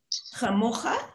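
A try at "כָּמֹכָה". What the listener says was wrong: Just give me the first letter. Not chabat.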